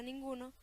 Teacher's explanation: Pero los sonidos reales del habla, llamados fonos y transcritos entre corchetes, son diferentes, puesto que la segunda consonante nasal, n, se acerca al lugar de articulación de la consonante siguiente, g, en este caso velar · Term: consonante nasal velar